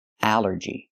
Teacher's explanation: The rule is ALL makes the sound all, like ball and call. But here it makes the A sound, the short A like in apple and black